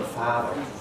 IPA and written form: ˈfaːðɚ (father)